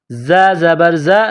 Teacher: زا میں سیٹی کی آواز پیدا کرنی ہے